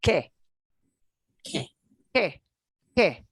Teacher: QUE and QUI, the U there will not get pronounced. This is one of the few times a U goes silent.